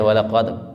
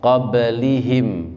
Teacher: dalnya mantul, kemudian qablihim, baknya mantul